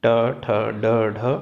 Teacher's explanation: ट वर्ग ट ठ ड ढ अण र और श, इनका उच्चारण स्थान मूर्धा होता है या इनका उच्चारण मूर्धा से होना चाहिए।